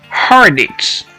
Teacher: Notice how I connected the consonant D in hard to the vowel I in it to say dits